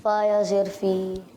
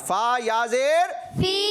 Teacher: ایک الف کی مقدار کھینچنا ہے آپ نے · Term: یا مدہ